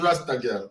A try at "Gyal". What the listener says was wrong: You have to round up your mouth for the Gyal. Rasta Gyal. You have to round up your mouth for that one there.